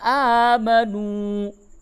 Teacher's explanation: کھڑا زبر کو بھی تھوڑا سا کھینچتے ہیں اور یہ واو مدہ ہے، اس کو بھی کھینچ کے پڑھیں گے